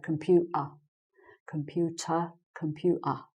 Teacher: i'm missing out the t and doing a glottal in my throat instead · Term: glottal stop